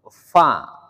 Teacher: Huruf fa kan rumusnya gigi atas berjumpa dengan bibir bawah.